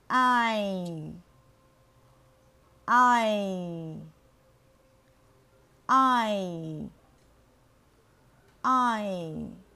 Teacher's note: Âm R được bắt đầu từ giữa lưỡi với miệng mở rộng. Đến Y thì lưỡi hơi nâng lên và miệng thì hẹp dần. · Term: nguyên âm đôi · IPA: /ai/